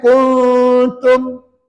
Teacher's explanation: Dengung dengan cara sembunyikan sebutan nun mati. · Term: Iqra' hakiki